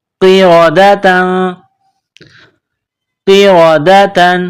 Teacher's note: قاف کو موٹا کرنا ہے، را کے اوپر زبر ہے تو را کو موٹا کرنا ہے ، قاف زیر قی، را زبر را، قیرا، دال زبر دا،